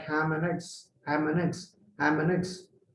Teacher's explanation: three words ham and eggs is squeezed into two words